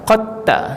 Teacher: Qad tabayyana, qad tabayyana itu dia qaf dal bertemu dengan ta, tapi dal itu kita langsung tak bunyi, terus pergi pada ta, qad ta. Itu idgham.